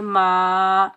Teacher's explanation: گے مو، لامو، میم کے اوپر زبر، آگے الف خالی ہے، الف خالی سے پہلے میم کے اوپر زبر ہے، یہ الف مدہ، اس کو ہم ایک الف کی مقدار کھینچ کر ادا کریں گے